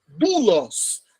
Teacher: Ômicron e Y. É um ditongo. Mas ele vai ser pronunciado como se fosse U.